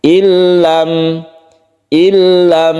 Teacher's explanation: idgham bilag nah idgham artinya masuk masuk ke huruf lam sehingga nunnya ini dalam pembacaan itu tidak ada kita langsung ke lam bila gunna tanpa berdengung jangan dipanjangkan illam illam